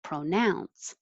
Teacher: it can be pro or pra because it's not stressed but now nouns is the stressed syllable